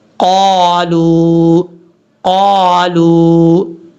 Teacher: اب اس کے بعد ہے قالو، 2 نقطوں والا قاف ہمیشہ پر پڑھا جاتا ہے، یاد رکھیے گا، 2 نقطوں والا قاف کو بریک نہیں پڑھنا۔ اس کا مخرج ہے زبان کی جڑ اوپر والے تالو کا جو نرم حصہ ہے وہاں پر لگے گی تو یہ قاف پڑھا جائے گا۔